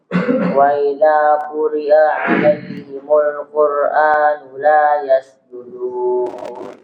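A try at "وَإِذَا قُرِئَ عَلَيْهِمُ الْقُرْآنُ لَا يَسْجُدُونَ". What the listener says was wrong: Nah, perhatikan di sini hamzah, ayo jangan diseret. Wa idza quri'a, itu hamzah ya. Jangan diseret ya, jangan begini. Wa idza quri'a 'alaihimul, jangan.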